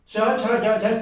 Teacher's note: च वर्ग जो है वो तालव्य है, क्योंकि इसका उच्चारण तालु से होता है।